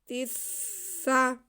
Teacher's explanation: تا کے زیر کو ہم سین کے ساتھ ملائیں گے کیونکہ سین مشدد ہے